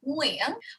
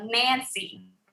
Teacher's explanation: the ng Vietnamese is back of your throat. So you should feel it back there like Nguyen, whereas the N in English is on the tip of your tongue, right? Like Nancy, right?